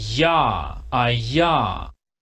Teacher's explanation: La fricativa palatal, que esa ya la conocen, suena así